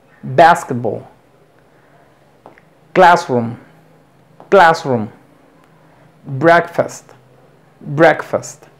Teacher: compuestos llevan el estrés o la acentuación en la primera sílaba